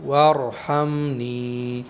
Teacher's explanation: را کو موٹا پڑھیں گے اس لیے کہ را ساکن سے پہلے زبر ہے